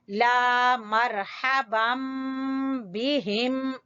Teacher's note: अलिफ मद्दा, तो ला को थोड़ा सा खींचेंगे